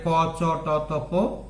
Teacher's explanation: তাহলে এইগুলো হচ্ছে অল্প প্রাণ বর্ণ। কেন, এগুলো উচ্চারণে প্রাণবায়ু অল্প প্রয়োজন হয়, অল্প নির্গত হয়। তাহলে অল্প প্রাণ একটা বাহ্য প্রযত্ন।